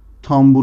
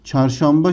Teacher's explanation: B sesi kendinden önce gelen N sesini M'ye dönüştürerek tambur olmuştur